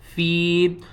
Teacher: فا یا زیر فی، یہ دیکھیں یا ساکن ہے اور اس سے پہلے دیکھیں زیر ہے، حروف مدہ ہے. فی کو ہم ایک الف کے برابر کھینچ کر پڑھیں گے